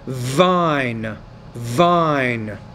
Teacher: So when the V's at the beginning of the word, you need to pronounce that with more vibration.